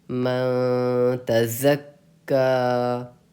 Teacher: زا کو ہم سختی سے پڑھتے ہیں، زا کو زال کی طرح بھی نہیں پڑھنا چاہیے اور ضاد کی طرح بھی نہیں